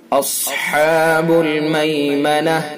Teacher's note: اصحاب المیمنہ، صاد کو پر کر کے پڑھیں گے.